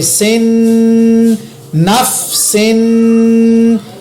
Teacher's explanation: نون زبر فا نف, سین دو زیر سن نف سن, یہاں پر میں نے سین کے ساتھ غنہ کیا